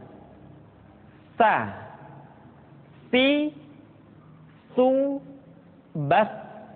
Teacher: dikeluarkan dengan menyentuhkan ujung lidah kita dengan dinding dua gigi seri bagian atas diucapkan dengan suara dan nafas yang terdengar mengalir sa SII su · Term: huruf saa